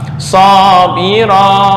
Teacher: Boleh 2, boleh 4, boleh 6. Cuma kalau sabira, sabira, ra hanya 2 harokat, nggak boleh lebih dan nggak bisa kurang.